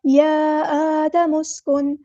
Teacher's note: یا آدم مسکن، میم کو اپنے سین کے ساتھ ملا دینا، حمزۃ الوصل ہمارا ڈراپ ہو جائے گا اور نون ساکن کی آواز کو یہاں واضح کرنا ہے، اظہار ہوگا یہاں پہ